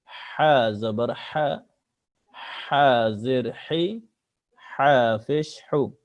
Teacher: লম্বা হা এ গলায় শোঁ আওয়াজ হয়, অর্থাৎ গলায় প্রথমে হা উচ্চারণের আগে একটু হালকা শোঁ আওয়াজ হবে, এরপর হা উচ্চারণ হবে।